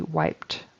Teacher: So that ED on the end there is pronounced as a T this time. He just left off any sound whatsoever on the end of that verb.